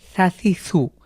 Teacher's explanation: এই সার যে মাখরাজ রয়েছে আমাদেরকে সেটা কিন্তু অবশ্যই পূর্ণাঙ্গভাবে আদায় করতে হবে। সা আমাদের জিভ হালকা বের হয়ে সামনের দাঁতার সাথে লাগিয়ে পাতলা করে বাতাস বের করে উচ্চারণ করতে হবে। এটা কিন্তু অবশ্যই বজায় রেখেই আপনাকে এই জবর, জের, পেশ দিয়ে উচ্চারণ করবেন।